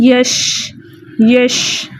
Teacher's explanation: شین کے اندر جو ہے ایک صفت پائی جاتی ہے تفشی کی، پھیل جاتا ہے. یہ جب ہم پڑھتے ہیں نا یش تو دیکھا نا اس کی آواز جو ہے پورے منہ کے اندر پھیل گئی.